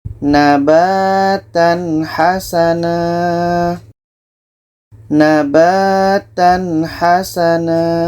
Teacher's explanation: Tanwin jelas, ha jelas, dan tidak ada dengung. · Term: izhar halki